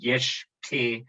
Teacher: after obstruents, it is actually pronounced as ke with a voiceless consonant. So this is actually then yesh ke, but it's not written as that.